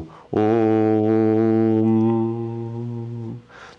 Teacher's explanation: जैसे ही हम होठों को बंद करेंगे, लिप्स को क्लोज करेंगे, तो वो म बन जाएगा